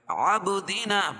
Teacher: با پر قلقلہ اور الف مدہ ہے، الف سے پہلے زبر ہے